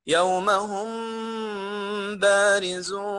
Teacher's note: الغنة وضعها حركتين زي ما سمعت حضرتك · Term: إخفاء شفوي